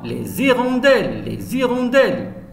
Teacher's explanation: Et toujours vous avez écouté la liaison, les hirondelles, les hirondelles. Le S se prononce Z.